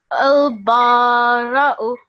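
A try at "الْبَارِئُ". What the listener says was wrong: Not ra. Remember, this is kasra, yeah? So al-bari'u.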